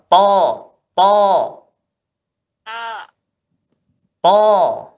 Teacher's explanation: Ya, belakang lidah naik. Belakang lidah sama tengah lidahnya naik menyentuh langit-langit sehingga bunyinya tebal.